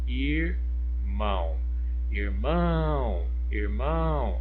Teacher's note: a sílaba tônica pronunciada com mais intensidade, mais força, foi o mão